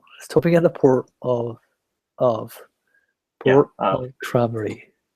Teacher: make sure you make it a schwa, and not like of